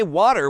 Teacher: In American English, people might say water with a D sound, while in British English, it's often W with a T sound.